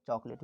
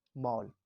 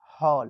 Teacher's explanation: बीच आ और ओ के बीच की ध्वनि से इसको बोलेंगे हम लोग चॉकलेट बोलेंगे